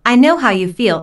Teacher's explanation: notice the emphasis on feel the speaker wants to show empathy and understanding